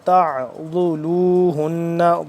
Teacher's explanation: عین کو حلق کے درمیانی حصے سے اور ذرا کھچاؤ پیدا کر کے پڑھیں گے